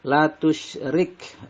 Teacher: La tusyrik, rik di sini ro-nya dibaca tipis atau tarkik karena ro berharokat kasroh